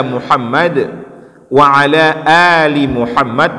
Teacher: Setiap di ujung Muhammad ini tetap ada qalqalahnya.